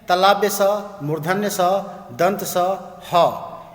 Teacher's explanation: इन व्यंजनों का उच्चारण करते समय मुख से गरम गरम वायु निकलती है, इसलिए इनको उष्म व्यंजन कहते हैं।